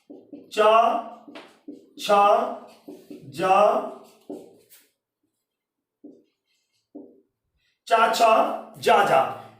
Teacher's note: स्पर्श संघर्षी में जिह्वा को बहुत घर्षण लेना पड़ता है, जैसे चा छा छा बोलने में देखा होगा पूरा एक्सप्रेशन बदल जाता है। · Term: स्पर्श संघर्षी व्यंजन